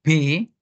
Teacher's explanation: disebut bilabial karena Bertemunya dua bibir dan dihentakkan